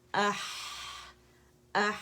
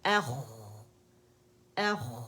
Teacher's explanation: آواز بھی چل رہی ہے اور ہمس بھی ہے. خو اخ اخ، آواز چل بھی رہی ہے اور ہمس بھی ہے.